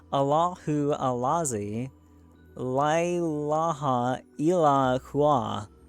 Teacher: the syllables of this are accented equally with certain pause between them, and are usually combined by fakirs with a rhythmical motion of the body to and fro.